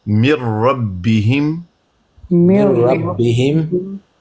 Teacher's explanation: ادغام کامل کی مثال ہے جب نون کی آواز باقی نہیں رہے گی